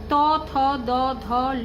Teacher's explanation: জিহ্বার সম্মুখ প্রান্ত বা জিহ্বার শিখর ওপরের দন্ত পংক্তিতে শ্বাসবায়ু নির্গমনে বাধা দেওয়ায় দন্ত ব্যঞ্জন ধ্বনিগুলি উচ্চারিত হয়